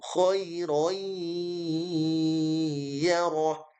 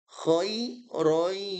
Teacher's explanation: Karena idgham bi gunnah, masuk dengan mendengung.